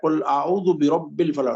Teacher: قاف کا جو مخرج ہے وہ زبان کی جڑ جب اوپر تالو سے لگتی ہے